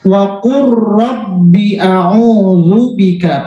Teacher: Wa qur rabbi a'udzu bika. Bacanya tidak wa qul rabbi, tapi waqur langsung masuk